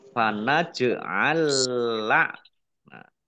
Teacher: Jim sukun juga bacaan Qalqalah dibaca memantul ditampakkan pantulannya